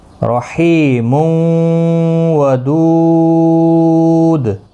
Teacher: تو یہاں پر دیکھیں تنوین کے بعد یرملون کا واو ہے، ادغام باگنہ ہوگا تنوین کے بعد یرملون کا واو، یعنی میم واو دو پیش مون، واو زبر و، مون و، رحیم و.